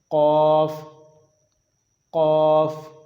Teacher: زبان کی جڑ کے ساتھ آپ اوپر کا تالو لگائیں گے تو وہاں سے قاف پڑھا جائے گا